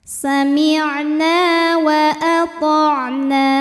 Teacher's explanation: ada alif didahului fathah, maka huruf nun panjang 2 harokat